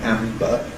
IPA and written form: ˈæmbə (Amber)